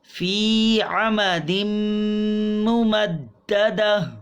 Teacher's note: تنوین کے بعد میم حروف یرملون سے اور ادغام مع الغنہ